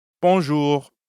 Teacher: the end of ju doesn't really sound like an english r you should feel that r in your throat yeah almost like you're gargling or clearing your throat